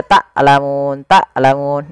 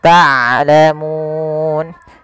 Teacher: Harusnya dia ain dari tengah tenggorokan kita, dan ain punya sifat bainiyah. Di antara syiddah dan rokhawah, tidak dialirkan suaranya dan tidak terlalu ditahan suaranya, tapi di tengah-tengah di antara keduanya.